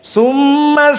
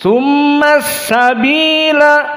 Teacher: dinamakan alif lam asyamsiyah langsung masuk kepada Sin